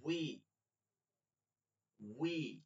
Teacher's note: এইবার জটিল উচ্চারণ দেখবেন, ওয়াউজের উই, ওয়াউজের প্রথমে এখান থেকে শুরু হবে উ, বি, উই, দুই ঠোঁট থেকে উই, ঠোঁট গোল করে উই